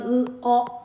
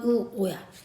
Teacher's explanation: 후설 모음이면서 평손 모음인 건 으 어 후설이면서 원순인 건 우오야.